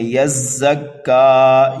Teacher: ایک الف کے برابر کھینچ کر کے پڑھیں گے، اللہ یزکا، زا کو سیٹی کی آواز دیں گے، سختی کے ساتھ پڑھیں گے،